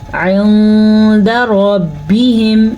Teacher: نون ساکن کے بعد دال حروف اخفا میں سے ہے، تو نون ساکن کو ہم چھپا کے غنّے کے ساتھ پڑھیں گے، پھر سے را کو پر پڑھیں گے، را پہ زبر کی وجہ سے.